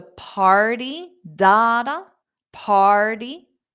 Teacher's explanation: Party is a noun. Stress is on the first syllable.